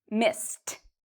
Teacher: S means you pronounce ED like a T sound.